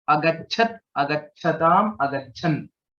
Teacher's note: Cha is a Mahaprana here, and it's also a Sanyuktakshanam. Cha and Cha, both of them are there.